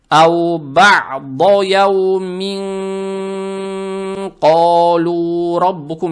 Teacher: Здесь танвин касру надо произносить скрыто, удерживая через нос, так как следующая буква каф будет ихфа.